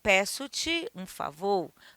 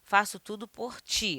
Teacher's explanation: O ti com E é átono, o ti com I é tônico